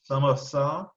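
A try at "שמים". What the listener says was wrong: No, it's an M at the end.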